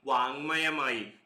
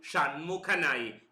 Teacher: ഉത്തരപദാദിയിൽ അനുനാസിക വർണ്ണം വന്നാൽ പൂർവ്വപദത്തിന്റെ ഒടുവിലുള്ള ഖരവർണ്ണം അനുനാസികമായി മാറും